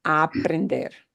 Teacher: because it's one sound sliding right into the exact same vowel, you'll just drag out the a.